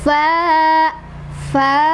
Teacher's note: Cara bacanya dipanjangkan sebanyak 2 ketukan. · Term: mad thobii